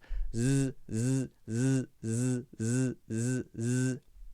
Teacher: So there, the tongue is right behind the teeth, vibrating in the Z sound. Both of those can be long sounds.